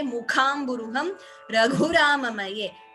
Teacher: If we do not use Ghosha for Gu, there is a tendency for it to be heard as Kha itself.